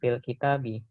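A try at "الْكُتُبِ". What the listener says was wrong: Kitabi mah ada alifnya.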